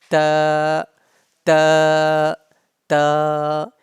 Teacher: ta pronounced from the tip of the tongue and the roots of upper front teeth.